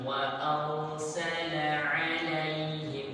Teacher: Ini tebal, ada tafkhim, bacanya ra itu tafkhim.